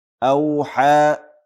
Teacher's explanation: دې ته مد صله وایي. دا هم د 2 حرکتونو په اندازه باندې آواز کش کېږي